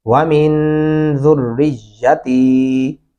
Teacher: یا کو لمبا نہیں کرنا اور تا کو کرنا ہے